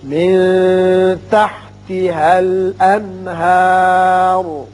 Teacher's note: الانہار نون پر اظہار حلقی ہوگا کیونکہ اس کے بعد حروف حلقی میں سے ہا آ رہا ہے۔ شاباش، را کو دونوں صورتوں میں پور پڑھیں گے کیونکہ اگر اس کو ملا کر پڑھیں تو اس کے اوپر پیش ہے، شاباش، اور اگر وقت پڑھیں تو یہ خود ساکن ہو جائے گا اور اس کے پچھلے آپ کے اوپر کھڑا زبر ہے اس لیے پر پڑھیں گے۔ · من کے نون ساکن پر اخفاء حقیقی ہوگا